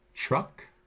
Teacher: the sort of CH sound which is palatalized after the r truck notice the r is in there it's upside down and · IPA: [tʲɹʌk]